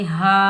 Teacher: ये अलिफ मद्दा, इसको हम एक अलिफ की मिकदार में खींच कर अदा करेंगे